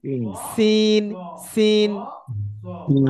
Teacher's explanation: দেখেন একটা হচ্ছে এই যে দাঁত আছে, দাঁতের আগা আর জিভের আগা, দুটো আগা এক জায়গায় এক জায়গায় টাচ লাগিয়ে, অর্থাৎ এক জায়গায় ঠেকিয়ে হাওয়া বার করলে তখন হবে সিন।